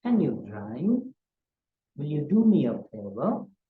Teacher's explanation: we use a rising tone, especially when we ask yes, no type questions.